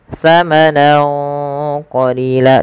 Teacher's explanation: Ya, fathatain bertemu dengan huruf qaf, maka di sini ada bacaan ikhfa yang lupa kami tuliskan. Cara membacanya yaitu samarkan suara nunnya kepada huruf qaf awalnya samanan, karena bertemu qaf samanan qalila, dan ditahan dengungannya sepanjang 2 harokat.